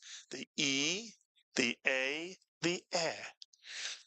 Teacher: And if you watch the mouth, the mouth tends to get larger, tends to open more as one says each of those three vowels